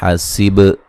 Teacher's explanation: سین کو باریک سیٹی سے ادا کریں گے ، با پہ قلقلہ کریں گے، یہاں میم ساکن کا اظہار